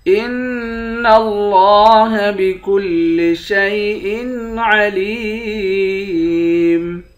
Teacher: ان اللہ بکل شیء علیم، نون مشدد پر غنہ کریں گے، لفظ اللہ کے لام کو موٹا بھی پڑھیں گے، کھڑا زبر ہے، ایک الف کے برابر کھینچیں گے، لام کو یا کے ساتھ ملا کر یا کو ایک الف کے برابر کھینچیں گے، آخر میں میم ساکن ہے۔